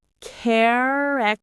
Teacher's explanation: The stress is on the first syllable, care.